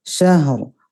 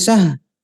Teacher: Jadi diseret ya, syahr. Dan kedengaran rohnya tetap ada, jangan syah, rohnya hilang, tidak.